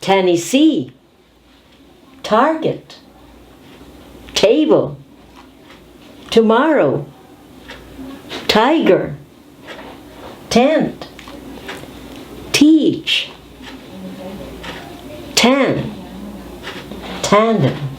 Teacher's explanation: time we're going to focus on the consonant American T notice it is aspirated T and therefore we have to explode it